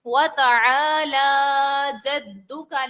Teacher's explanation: لام کو کھینچنا ہے کتنے مقدار تک؟ ایک الف کی مقدار تک ہمیں کھینچنا ہوتا ہے. تو یہ بھی ذہن میں رکھیں کہ لام پر کھڑی حرکات ہے اس کو لازمی کھینچنا ہوتا ہے, اس کو بغیر کھینچے ادا نہیں کرنا ہے.